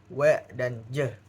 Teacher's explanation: dua alat ucap ini saling mendekat namun tidak cukup rapat untuk menghasilkan gesekan. Contohnya di huruf W dan J. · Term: hampiran, aproksima